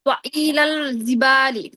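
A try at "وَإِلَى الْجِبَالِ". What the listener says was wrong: জিম শক্ত হবে, জিমটা দেখতেছি আজকে সবারই কেমন যেন হচ্ছে। ওয়া ইলাল জিবালি,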